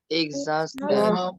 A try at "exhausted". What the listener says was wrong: Yes, good job.